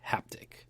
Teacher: It starts with that breathy H sound, like a hand reaching out, and it ends with that sharp percussive tick. It feels like a contact point.